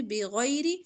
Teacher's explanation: غین موٹا پڑیں گے را کے نیچے زیر ہے باریک پڑیں گے